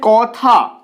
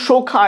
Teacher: কথা দ্বিতীয় স্বরে রয়েছে দ্বিতীয় স্বরে কি রয়েছে আ রয়েছে তাই প্রথম স্বরের ক এর পরে যে অটা আসছে সেটা অ এর মতই উচ্চারিত হচ্ছে ও এর মত উচ্চারিত হচ্ছে না এটাকে কিন্তু আমরা বলছি না যে কথা এভাবে কিন্তু বলছি না